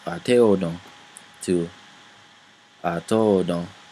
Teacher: So the te and the o combine, and since te has a high tone and o has a low tone, they combine to to. It becomes a falling tone. So it goes from ateodon to atodon.